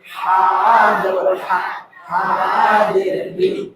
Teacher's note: বড় হায়ের উচ্চারণে গলায় শোষ শব্দ হবে